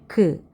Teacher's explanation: 혀를 목구멍에 댔을 때는 소리가 나지 않다가 그 해서 터트려야만 소리를 만들어요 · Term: 파열음